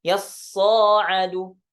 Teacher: Jadi ada tambahan alif setelah huruf shad. Jadi shadnya dibaca panjang dan ainnya ditakhfifkan, tasydidnya dihilangkan.